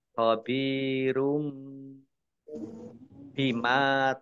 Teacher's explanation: Domah tanwin bertemu dengan huruf ba, bacaan iklab, dibaca membalik. Tanwinnya dibaca mim.